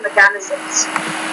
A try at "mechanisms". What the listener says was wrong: And the stress there is mechanisms, not mechanisms, but mechanisms. So put the stress on that first syllable on there, mechanisms.